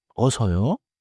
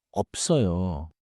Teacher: The natural sound keeps a lip stop